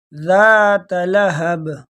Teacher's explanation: با کو توڑ جھٹکے کے ساتھ پڑھیں گے. وہ میں نے آپ کو بتا دیا اس لیے کہ یہ حروف قلقلہ میں سے ہے.